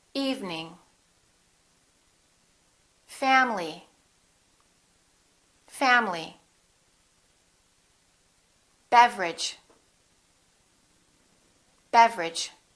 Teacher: Each one of these words contains one vowel, one syllable, which is not pronounced.